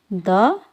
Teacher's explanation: द वर्ण का उच्चारण स्थान दंत्य है।